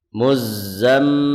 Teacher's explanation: Zai yang bertasdid ini tidak ditahan ya Adapun mim yang bertasydid digunahkan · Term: ghunah